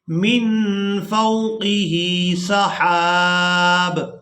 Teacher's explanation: اب یہاں پر بھی آپ لوگ علامات وقف دیکھ رہے ہیں، وقف کی صورت میں با کو ساکن کر دیں گے، ہا کو الف مدہ کی وجہ سے کھینچتے ہوئے با ساکن کے ساتھ ملائیں گے